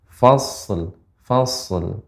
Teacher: Jadi ini sodnya kita berikan sifatnya fas, ya, tebal dan mengalir.